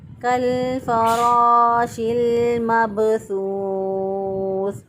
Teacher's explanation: فا کے آگے غیر ضروری طور پر یہاں پہ الف جو ہے وہ داخل کر دیتے ہیں